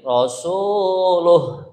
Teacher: lu-nya panjang 2 harokat. Luh ini pendek, ya, tidak ada tanda panjang sama sekali